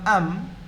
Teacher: consonant but it is acting as a vowel here ambabani [Music] so this is known as a syllabic consonant it's a nasal so nasal sounds can act as syllables in certain environments in